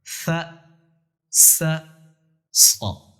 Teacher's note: فا میں سیٹی کی آواز نہیں ہے، باریک پڑھا جا رہا ہے، سین میں سیٹی کی آواز ہے، صاد میں سیٹی کی آواز تو ہے لیکن صاد موٹا پڑھا جا رہا ہے۔ یہ ان حروف میں تینوں میں فرق ہے۔